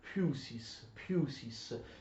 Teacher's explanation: Questo PH, cioè il cosiddetto Φ in greco, non è una F. Il greco antico non possiede assolutamente la lettera F, è un P seguito da aspirazione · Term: P aspirato